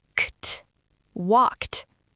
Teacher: It ends in an unvoiced K sound, walk. To make it past tense, we don't add ed, we just add a T, walked.